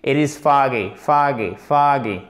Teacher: c'est bien une voyelle longue qui est entre le A et le O et plus proche du A si on veut être précis.